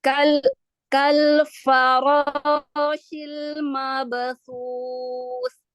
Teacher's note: Ini kurang tafasyi sedikit huruf shinnya.